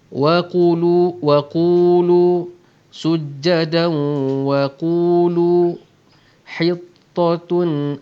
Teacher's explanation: adanya tanwin bertemu dengan waw. Lagi sekali hukum idgham ma'al gunnah, kita dengungkan dengan kadar dua harakat